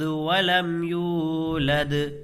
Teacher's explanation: یہاں یا واو پیش یو، واو مدہ ہوگا، واو ساکن سے پہلے پیش ہے تو اس کو کھینچ کر کے پڑھیں گے